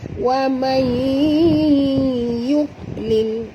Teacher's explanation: Nun mati bertemu ya, macam tadi juga kita kena masukkan bunyi nun ini terus ke dalam ya, ya. Disertai dengung 2 harakat, idgham ma'al gunah juga, ya.